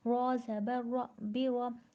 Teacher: را پر زبر ہے نہیں کھینچیں گے اور را کو پر پڑھیں گے